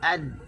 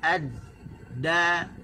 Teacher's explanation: hujung lidah diletakkan di gusi